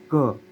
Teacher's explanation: क बोल रहा है तो कंठ को लग रही है जीभ देखो तो एक बार क तो क जब उच्चारण करते हैं तो हम ऐसे पूरा जोर लगा के करते हैं। · तो क बोल रहा है तो कंठ को लग रही है जीभ। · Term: स्पर्शज्ञ